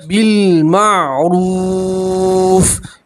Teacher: را کے ساتھ واو مدہ اس طرح ایک الف کے برابر کھینچیں گے